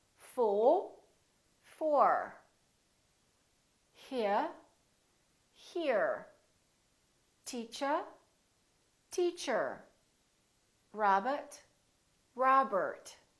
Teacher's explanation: In British English, people generally don't pronounce the final R, the R at the end of the word. So they say teacher. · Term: British R